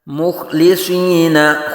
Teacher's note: ख्वा को पुर पढ़ेंगे, लाम बारीक और स्वाद को फिर पुर पढ़ेंगे।